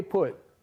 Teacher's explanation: If you say put, your tongue, at least my tongue, touches the alveolar ridge.